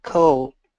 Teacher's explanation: And the reason here, especially L and D, the dark L and the D are the same position.